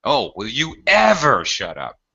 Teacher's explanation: I often emphasize or highlight the adverb, always, constantly. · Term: expressive intonation